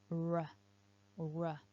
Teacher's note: I'm making that sound by curling my tongue backwards inside the mouth. · So the tip of the tongue curls up and back when I make the R. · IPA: /r/